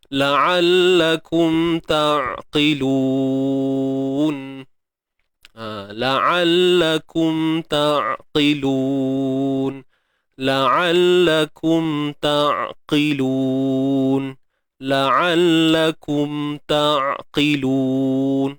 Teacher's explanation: Izhar ni maksud jelas, zahirkan sebutan dia. La'allakum huruf ain tengah kerongkong sempitkan dia. Ta'qilun dan jaga sifat tawassut.